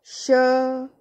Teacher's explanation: जब वर्ण श का उच्चारण करते हैं तो जीभ तालु का स्पर्श करती है, इसीलिए इसे तालव्य श कहा जाता है।